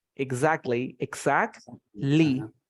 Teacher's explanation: You have a T between consonants. So you don't say it. So you say exactly, exactly.